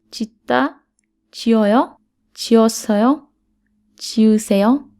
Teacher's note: The next category is verbs and adjectives whose stem ends with 시옷. When they're followed by a vowel, 시옷 disappears.